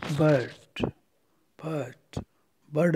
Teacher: आर को नहीं बोलते हुए साइलेंट करते हुए